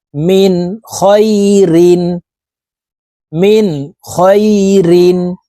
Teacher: নুন সাকিনের পরে ইজহারের হরফ খ আসছে এই কারণে এই নুন সাকিন কে গুন্না ছাড়া পড়তে হবে